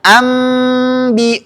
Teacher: cara mengucapkannya dengan merapatkan kedua bibir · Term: Iqlab